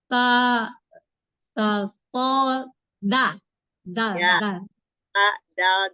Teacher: ta ujung lidah di itu di atas gigi seri atas saja ya ujung lidah bertemu dengan pangkal gigi pangkal atas